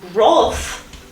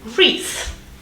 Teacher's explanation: R and Th, yeah, so the post-alveolar approximant and the dental fricative